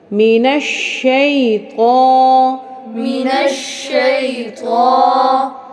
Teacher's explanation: شین کی آواز کو مکمل ہونے دیں اور اس کے اوپر شد کو بھی مضبوطی کے ساتھ ادا کریں